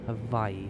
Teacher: It's with a V, but you've got to insert a glottal stop between the two eyes.